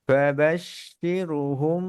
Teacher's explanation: বাবাশির কাসরা পরে র সুকুন, র পাতলা